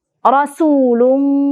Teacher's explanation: rasulung ada ikhfa kita dengungkan di situ